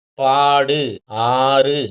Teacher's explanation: நெடில் எழுத்து தனி எழுத்தா வந்து அதன் பிறகு இந்த வல்லின உகரங்கள் வந்தா அது வந்து அரை மாத்திரை அளவு குறைந்து ஒலிக்கும் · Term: நெடில் தொடர் குற்றியலுகரம்